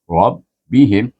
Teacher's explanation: R dibaca dengan tafkhim tebal gabungkan dengan ba yang bertasdik